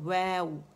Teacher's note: lips کی rolling سے واو شروع ہوگا اور رولنگ پر ہی ختم ہوگا